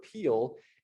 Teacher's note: And yeah, that it sort of transitions to this dark L sound, which for some people may not be an actual consonant, maybe just sort of this backish vowel